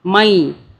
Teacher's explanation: میم کو یا سے ملائیں گے کیونکہ یا کے اوپر تشدید ہے۔ یا کی 2 مرتبہ آواز بنے گی